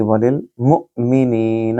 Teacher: اور نی کو لمبا کریں کیونکہ یا مد ہے